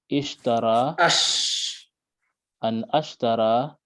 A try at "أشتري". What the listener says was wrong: أشتري. So yeah, it's not alif maksura, it's not dots. Alif maksura is dotless, yeah.